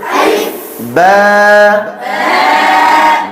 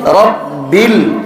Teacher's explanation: বায়ের মখরাজ হলো দুই ঠোঁটের বিজা অংশে।